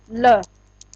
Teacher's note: वायु जीभ के दोनों पार्श्व, पार्श्व होता बगल में, पास में से दोनों साइड से निकल जाती है, तो उसे पार्श्विक वर्ण कहते हैं।